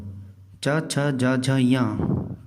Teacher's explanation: चवर्ग, मुंह में तालू से जीभ टकराती है।